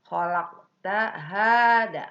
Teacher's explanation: Nah, ini termasuk qalqalah sugro, maka mantulnya itu kecil saja ya.